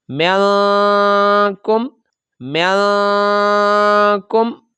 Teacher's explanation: ناک میں آواز چھپا کر ہم ادا کریں گے ، تو ان 2 حروف پر آپ نے غنہ کرنا ہے۔